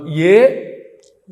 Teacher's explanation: ఏ అన్నప్పుడు కంఠము తాలువు రెండు కలిపి పనిచేస్తాయి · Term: కంఠ తాలువు